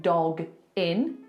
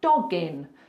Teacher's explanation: when you've got that hard consonant followed by a vowel just push the two together like it's one word so instead of saying dog in you're going to say doggin